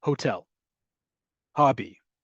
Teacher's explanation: It is not a raspy H, nor is it silent.